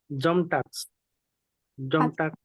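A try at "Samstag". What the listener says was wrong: এটা কিন্তু জাম না ভাইয়া, এস আছে না, তাহলে কি হবে? জামস্টাক। ইয়া, জামস্টাক।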